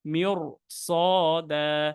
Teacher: এখানে আপনি এই সদের কারণে আমরা এই র সাকিনটা মোটা করে ফেললাম।